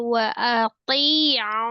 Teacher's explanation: Wa ati itu ta-nya juga tebal. Wa ati'un. Mad arid ya terakhirnya.